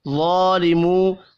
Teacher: میم ساکن کے بعد وا ہے، اظہار شفی ہوگا، یہاں پر غنہ نہیں ہوگا. ظالمو، واو مدہ ہے، ایک الف کے برابر کھینچ کر پڑھیں گے. وا کو پر بھی پڑھنا ہے، کھڑی زبر کی وجہ سے اس کو بھی ایک الف کے برابر کھینچ کر پڑھیں گے.